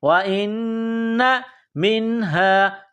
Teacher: نون مشدد ہے، یہاں غنہ کریں گے، آواز ناک میں چھپائیں گے